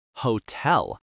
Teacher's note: hotel, is stressed on the second syllable, hotel, not hotel.